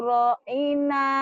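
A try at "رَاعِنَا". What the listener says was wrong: ro-nya panjang, ro-nya panjang.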